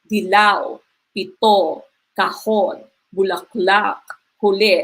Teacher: yung stress po ay nasa last syllable · nasa huling pantig ang kanyang diin. So last syllable, yung kanyang diin. Wala itong impit na tunog. So para siyang malumay, kaya lang yung mabilis lang yung pagkakabigkas sa kanya at yung stress niya ay nasa last syllable, not in the second to the last syllable.